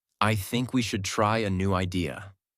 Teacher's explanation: Voice goes down at the end. This is called falling intonation, and it instantly makes you sound more mature, certain, and in control.